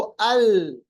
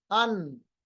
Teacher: लाम जब पढ़ेंगे तो हमारा सनाया, हमारा अनियाब और हमारा दवाहिक तीनों मिलेंगे, जबकि नून पढ़ेंगे हमारा सनाया ऊपर वाला और अनियाब तक मिलेगा